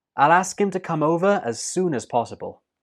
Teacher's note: the n and that links to us to become soonas soonas and the last word possible is stressed